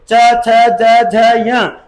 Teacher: आपकी जीवा जो है वो क्या कर रही है? तालों पर रगड़ खा रही है। संघर्ष कर रही है। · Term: स्पर्श संघर्षी